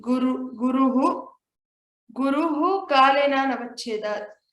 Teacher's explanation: so this is a ukara plus a visarga. Then we have to pronounce it as uhu only.